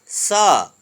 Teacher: श, ये मूर्धन्य श बोलते हैं, इसका होता मूर्धा है। स, दंत स बोलते हैं, जिसका उच्चारण स्थान दंत है